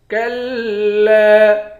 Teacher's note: کلا، کاف کو لام کے ساتھ ملا کر لام کو سختی کے ساتھ جمع کر پڑھیں گے، لام پر تشدید ہے، تشدید والے حرف کو جمع کر سختی کے ساتھ پڑھتے ہیں۔ لام کے بعد الف ہے، الف حروف مدہ ہے، ایک الف کی مقدار کھینچ کر پڑھیں گے۔